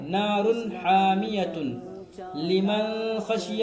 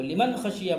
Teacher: نار حامیۃ لمن خشی، اس طرح پڑھیں گے تو یہ غلط ہو جائے گا، اس لیے کہ نون ساکن کے بعد حرف حلقی میں سے خا آیا ہے، یہاں پر نون کی آواز کو، نون ساکن کی آواز کو ظاہر کر کے بغیر غنہ کے جلدی پڑھنا ہے